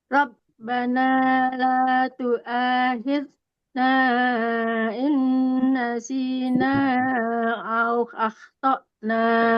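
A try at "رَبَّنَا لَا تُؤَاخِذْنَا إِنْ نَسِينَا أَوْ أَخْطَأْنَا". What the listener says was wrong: Nah, fokusnya di sini. Yang lain benar. Tinggal khidna sama au jangan lagi dikasih angin yang masih tersisa. Itu namanya rahwa.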